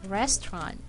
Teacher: when you say this word it's going to be like this restaurant one silent syllable is taken out